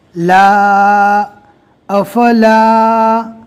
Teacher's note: یہ لا کو اس لیے کھینچا کہ الف مدہ ہے، خالی الف سے پہلے زبر آ گیا اس لیے الف مدہ ہوگا۔